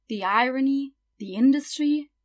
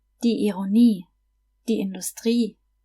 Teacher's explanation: In German, however, you just stress the last syllable.